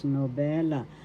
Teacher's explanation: Second syllable is where the accent is.